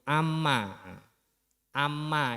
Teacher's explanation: mim tasdid dan Nun tasdid ini harus dibaca dengung